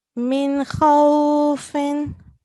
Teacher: So we have to make sure that we do not stay in this Nun Sakin and we pronounce it clearly · So if a Nun Sakin or Tanween is followed by any of these letters shown on the right, these letters, then we would pronounce the Nun Sakin and or Tanween clearly without any nasal sound or elongation · As we can see here, we have a Nun Sakin and it is followed by a Ha. Kha is a letter of Huruful Halki or Huruful Izhar, so we would not be doing nasal sound here.